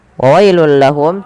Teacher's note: Wa wailul lahum, tanwinnya masuk ke huruf lam karena ia idgham bila gunnah. Adanya tanwin bertemu dengan huruf lam, masukkan ke lam.